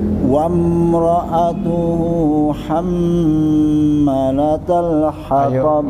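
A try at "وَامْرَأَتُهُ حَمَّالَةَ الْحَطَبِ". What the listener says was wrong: Mahnya panjang Pak, lihat. Hamma kurang. Bagus, cuman ro-nya kok saya merasa kurang jelas ya. Ro itu kan punya sifat takrir Pak, sukunnya. Jadi ada r-nya dulu. Wamra'atuhu. Wamnya jangan lupa ditahan lebih lama dikit.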